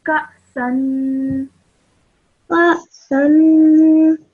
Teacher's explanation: the hamza has a sukoon, so you produce a slight jerk sound